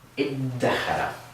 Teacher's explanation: In this case with 'dhaal,' what we do is we actually wind up with a 'daal' sound. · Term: dal sound